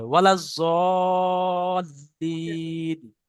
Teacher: লামের উপরে তাজদিদ, লামটাকে দুবার পড়তে হবে।